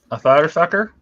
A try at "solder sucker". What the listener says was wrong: A thotter thucker. No, thotter thucker. There is no S. TH.